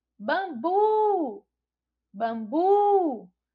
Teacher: a sílaba tônica é o bu e está localizada aí na última sílaba. Então, a palavra bambu, ela é oxítona.